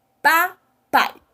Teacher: a vogal de destaque, ela é pronunciada com mais vontade. E a semivogal, ela é pronunciada de uma maneira mais discreta.